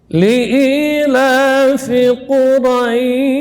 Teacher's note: Kemudian ya huruf yang terakhir di ayat yang pertama itu huruf sya, huruf yang keluar dari tengah lidah, ya, huruf hamas dan rakhawah, dia mengalir suara dan udara. Jadi dorongannya di saat menyebutkan huruf sya itu dari tengah lidah.